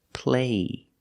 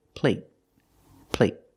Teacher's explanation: so the vowel is longer here play compared with plate plate the stop T makes a vowel shorter